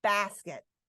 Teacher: The stressed syllable, bass, that has a full vowel sound.